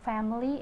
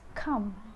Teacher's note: The first sound of nasal is m. M is voiced bilabial nasal.